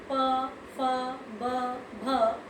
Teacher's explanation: इनमें आपके दोनों होठ मिल रहे हैं, होठों का प्रयोग हो रहा है, तो ये है ओष्ठ उच्चारण स्थान।